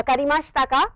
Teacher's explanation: remember the rising intonation is very very important with car always the intonation is high that is what makes it into a question statement